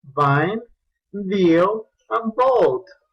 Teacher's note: va a colocarse con el labio inferior y el diente superior, fricative porque hay una ligera obstrucción, que se produce turbulencia, and voice porque vibra al momento de hacerlo. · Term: labiodental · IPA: /v/